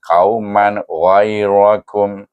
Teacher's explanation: Maka dibaca dengan izhar haqqi. Kauman jangan didengung, jangan dipanjangkan.